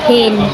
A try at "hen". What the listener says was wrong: Eh, ang e di ba kay? E ang letter, di ba? H-E-N.